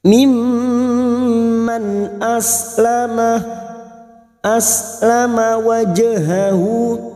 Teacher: Mimman nun sukun bertemu hamzah lagi idhar halki dibaca jelas.